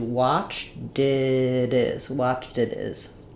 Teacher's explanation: I tend to do it is. I link those. I flap that T.